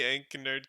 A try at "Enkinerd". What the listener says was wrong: soft K, by the way. You got it right, but it's a soft K. Like the K in knife and need.